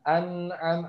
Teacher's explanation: tekanan gunahnya itu jadi ke hidung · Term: guna asliyah